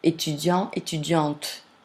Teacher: Now in feminine, when I add that mute E, which is the mark of feminine, the consonant becomes sonore